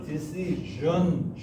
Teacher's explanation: D 발음이 명사할 때는 구개음화가 돼서 decision, 이렇게 구개음으로 발음이 난다는 거예요